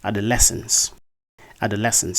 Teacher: in this word the primary stress falls on the third syllable that's on the Le syllable uh the word is actually pronounced